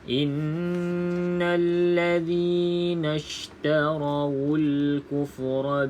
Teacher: wajib kita baca dengan dengung dua harakat